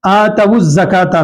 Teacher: اسی طریقے سے آتوا الزکاۃ میں آپ غور کریں، آتوا الزکاۃ میں واو کو ہم زا سے ملا کر پڑھ رہے ہیں